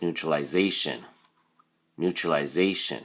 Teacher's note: because it's so long there's a stress on the first syllable new